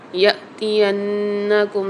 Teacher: نون کے اوپر مشدد آ رہی ہے تو یہاں پر ہم غنہ کر کے پڑھیں گے